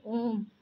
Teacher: जैसे आप स्वयं उच्चारण करके देखिए, ओम। ओम का उच्चारण आप करेंगे तो आपको ह्रस्व स्वर से भी अधिक समय लगेगा। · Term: पुलुप्त स्वर